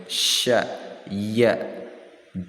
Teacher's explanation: di tengah-tengah lidah dan tengah-tengah langit-langit atas